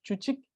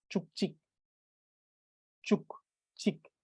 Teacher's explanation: Thus, what it does is that instead of this being chuchik, the sound of k adds to the end of chu, making it chuk, and this becomes chik.